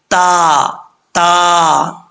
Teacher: जुबान की नोक ऊपर वाले दांतों की जड़ों से लगे तो ता पढ़ा जाता है · فلولا تذکرون، تا ہے یہاں پہ دو نقطوں والا، زبان کی نوک اوپر والے دانتوں کی جڑوں سے لگے تو تا پڑھا جاتا ہے، باریک تا تا، ٹھیک ہے، اس کو موٹا پڑھنے کی ضرورت نہیں ہے۔ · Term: बरीक ता